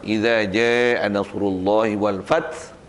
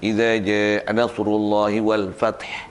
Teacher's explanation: Hamas yang keluar, ha setengah harakat.